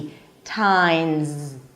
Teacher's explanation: The s is actually pronounced as a z